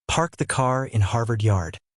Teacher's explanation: Unlike British English, American English pronounces the R in words like car and mother. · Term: R sound